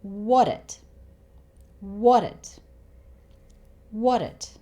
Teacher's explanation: the 't' sound in 'what' actually changes to something that sounds somewhere between a D and a T. · the 't' sound at the end of 'it' is really short. He actually doesn't say it.